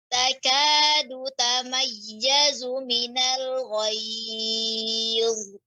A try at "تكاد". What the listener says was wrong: Ya, sebentar pengucapan dal. Takadu. Ya, dengan punggung lidah, ujung lidah.